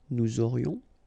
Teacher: final S not pronounced, and then you've got this liaison